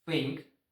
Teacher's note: unvoiced, only without sound, just th. Only air comes out of mouth.